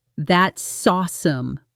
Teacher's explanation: That's awesome is ONE unit: That-saw-some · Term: Linking Sounds